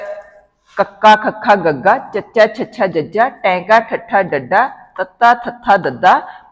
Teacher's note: ਮੂੰਹ ਪੋਲ ਦੇ ਵਿੱਚ ਹਵਾ ਜਿਹੜੀ ਉਹ ਪੂਰੀ ਤਰ੍ਹਾਂ ਡੱਕੀ ਜਾਂਦੀਹ। ਪੂਰੀ ਤਰ੍ਹਾਂ ਰੋਕ ਕੇ ਜਿਹੜੀ ਫਿਰ ਬਾਹਰ ਛੱਡੀ ਜਾਂਦੀ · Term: ਡੱਕਵੇਂ ਵਿਅੰਜਨ